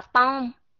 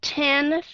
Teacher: chúng ta chỉ cần có cái sự thổi hơi ra nhớ là âm t cái cách chúng ta đặt đầu lưỡi giống như chữ t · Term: hơi gió